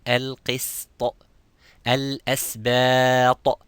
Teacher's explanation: So not to make the sin mufakham as a heavy letter.